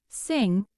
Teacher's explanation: It is called the velar nasal. It is produced by lowering the soft part of the roof of the mouth, allowing air to pass through the nasal cavity while the back of the tongue contacts the velum.